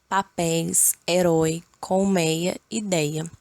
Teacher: ditongo aberto é pronunciado com a boca mais aberta